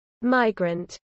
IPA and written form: ˈmaɪɡɹənt (migrant)